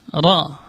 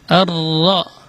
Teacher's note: Jadi kalau bukan dari ujungnya tapi bagian atasnya lidah ketemu dengan gusi atas ra, dan dia tidak boleh banyak getarannya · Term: huruf ra